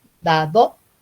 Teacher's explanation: la primera D, la lengua está detrás de los dientes, da, do es interdental, pero ahí están en distribución complementaria, las dos Ds, porque es dado y da, do, es diferente.